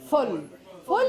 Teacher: Short vowel, long consonant.